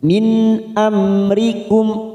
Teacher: ada nun sukun bertemu Hamzah namanya Idhar halq kita baca jelas tanpa mendengung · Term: idhar halki